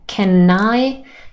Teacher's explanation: there is linking between can and i and sentence number one can i i really sounds like nai